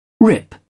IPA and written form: rɪp (rip)